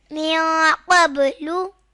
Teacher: یہاں نون ساکن کے بعد قاف آ رہا ہے تو اخفا ہوگا